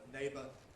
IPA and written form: ˈneɪbə (neighbour)